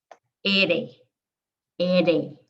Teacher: you take the tip of your tongue and you touch it to the hard palate on the top of your mouth behind your teeth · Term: a tap